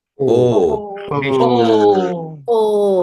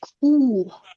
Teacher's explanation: here this is not long vowel of U. This is just O.